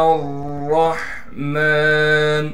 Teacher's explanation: میم پر کڑا زبر ہونے کی وجہ سے میم کو 1 الف کی مقدار کھینچیں گے